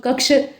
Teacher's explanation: यहाँ क्ष हम लोग बोल रहे हैं उसमें हल्का सा मूर्धा का भी इस्तेमाल होगा, मतलब मूर्धा में जाकर हल्की सी जबान चिपकेगी आपकी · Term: मूर्धन्य श